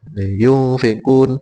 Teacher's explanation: tajwid niku ee membacanya kalau ikhfa bacaan ikhfa itu berdengung ee yang semula nun saja nun sukun menjadi ng atau eng